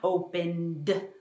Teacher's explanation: I feel the movement, I feel the vibration, so I need to add the D sound